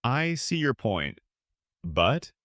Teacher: rising intonation sounds unsure